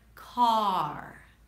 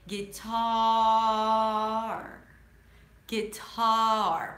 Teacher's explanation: make sure you you stretch out the vowel before the R.